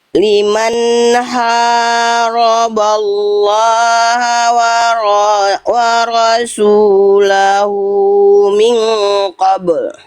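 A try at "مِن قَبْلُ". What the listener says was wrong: Tahan dulu ikhfanya. Kurang ditahan.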